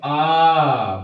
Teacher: अगर हम कहें कि कौन सा स्वर बोलने में मुंह सबसे ज्यादा खुलता है तो कौन सा होता है? देखिए, होता है आ, बड़ा वाला आ। ठीक है दोस्तों, क्योंकि इसी से मुंह पूरा खुलता है, बाकी के किसी स्वर में इतना ज्यादा मुंह नहीं खुलता है, या तो आधा खुलता है या तो आधा बंद रहता है या तो पूरा बंद रहता है। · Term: विपरीत स्वर